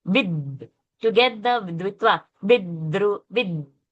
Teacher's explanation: Without touching the tongue to the teeth, you cannot get that dvitva, vidru. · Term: dental sound